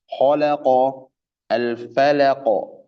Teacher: Asli itu meninjau pada karakter lam. Karakter huruf lam itu kan istifal, infitah, tipis. Ya, karakternya tipis. Makanya bacanya ya tipis. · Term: lam hijaiyah asli